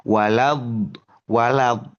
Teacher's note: kalau di Al-Fatihah itu eh waladin itu ya panjang gitu ya lima harakat itu ya nah 5 atau enam harakat Walad walad.